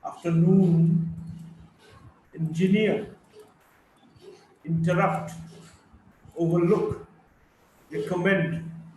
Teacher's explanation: Primary stress on the third syllable and secondary stress on the first syllable